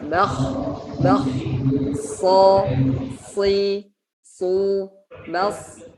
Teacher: isti'la di sini adalah dengan cara mengangkat pangkal lidah ke langit-langit sehingga suaranya otomatis menjadi tebal.